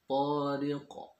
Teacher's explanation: Ada qalqalah. Qalqalahnya kubro, artinya pantulan, suaranya itu terdengar lebih jelas dibandingkan ketika posisinya di tengah-tengah.